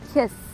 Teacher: O último som de kiss é o que, ó? Kiss. Não produz vibração na garganta. Então, no passado, vamos pronunciar esse ED com som de T.